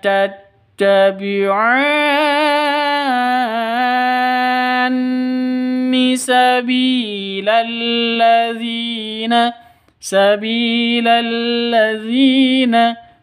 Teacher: Bi panjang 2 ketukan karena ada ya mati diawali dengan kasroh atau ya mati sebelumnya kasroh. Mad asli 2 ketukan.